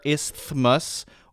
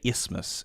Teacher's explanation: people sometimes put the th there, isthmus, or they just say isthmus, and they don't really pronounce the th